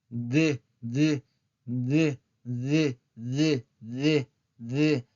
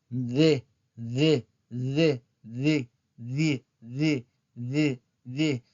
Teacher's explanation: la D es sonora porque si ustedes llevan su mano a la garganta y pronuncian la D, van a sentir, perdón, una vibración.